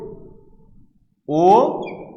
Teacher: ও এবং ই যুক্ত হয়ে ওই হয়েছে, তাই এটি হচ্ছে যৌগিক স্বরধ্বনি, এটি কোনো মৌলিক স্বরধ্বনি নয়